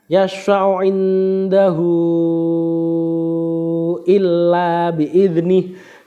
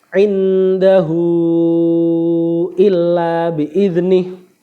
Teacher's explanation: Mat silah tawilah yaitu hak dhamir yang bertemu dengan hamzah yang dibaca panjang 4 atau 5 harokat ketika wasal dan berubah menjadi mati ketika waqaf.